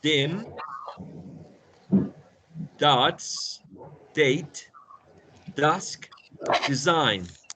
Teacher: En todas estas palabras, el sonido inicial es producido con la lengua arriba, en la zona llamada alveolar ridge.